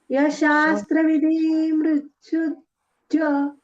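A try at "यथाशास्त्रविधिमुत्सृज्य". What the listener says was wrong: विधी दीर्घ नका करू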